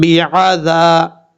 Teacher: با کے بعد جو عین ہے اس کو کلیئر کرنا ہے، حمزہ کی آواز نہیں آنی چاہیے